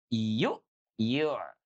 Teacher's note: Jadi huruf ain itu ya sekali lagi bukan dari rongga hidung tapi dari mana? Dari tengah-tengah tenggorokan.